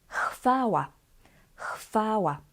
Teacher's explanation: The V changes to F again because H sound is always voiceless, and it influences the V, the W, and this sound becomes F.